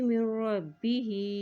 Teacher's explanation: हा के नीचे खड़ी ज़ेर है तो इसको भी एक हरकत लंबा अदा करेंगे